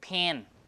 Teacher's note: the vowel is nasalized even before the pronunciation of N. So this is like in anticipation. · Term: nasalization